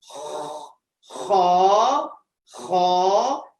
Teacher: جیسے ہی آپ نے خا کہا یہاں پہ ایک خراش کی آواز آپ کو سنائی دے گی، ایک اسکریچی ساؤنڈ، ایک خراش کی آواز، خا، خا، ایک خراش کی آواز سنائی دیتی ہے.